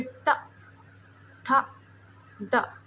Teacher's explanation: जैसे बोलिए ट, ठ, ड, तो जीभ हमारी कहाँ? पीछे की तरफ थोड़ा मुड़ रही है, तो ये हो जाएगी मूर्धा।